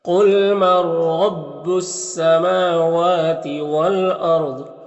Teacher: یہاں پر الف لام حروف شمسی سین کے شروع میں تو الف لام دونوں کو نہیں پڑھیں گے، میم اور واو دونوں میں کھڑا زبر جو الف مدہ کی طرح ہوتا ہے۔ والارض میں را کو پر پڑھیں گے، ضاد کو بھی پر پڑھیں گے · یہاں پر نون ساکن کے بعد را ہے، حروف یرملون میں سے تو ادغام تام ہوگا، اس کو بغیر غنہ کے پڑھیں گے